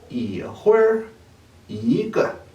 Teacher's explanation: cuando tenemos un número 1 seguido de una sílaba con tono 4 o tono neutral, el tono del número 1 cambiará a tono 2